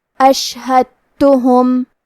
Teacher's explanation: کلمت اشہدتہم میں یہاں دال ساکن ہے، پھر حرف تا ہے، یہاں حکم ہے ادغام، ہمیں حرف دال کو تا میں ملا کے صرف حرف تا کو تشدید سے پڑھنا ہے۔